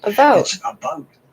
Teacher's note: It's called Canadian raising. In Canada, we have a raised vowel.